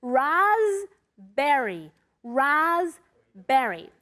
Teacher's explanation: you don't ever pronounce the P. It's a silent P.